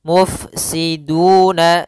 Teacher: Alirkan dalam huruf fa sifat hamznya yaitu mengalirnya nafas. Mufsiduna, du ada dhammah bertemu waw yaitu mad tabi'i.